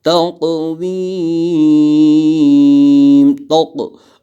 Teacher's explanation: قوف میں قلقلہ ہوگا، اور سب سے قوی قلقلہ جو ہوتا ہے، سب سے قوی یعنی زیادہ قلقلہ جس میں ہوتا ہے وہ قوف میں